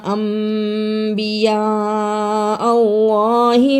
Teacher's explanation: اقلاب ادا کیا، الف مدہ کو بھی ادا کیا، ساتھ بڑی مد پڑی تھی، اس کو بھی ادا کیا اور اللہ کو پر پڑھا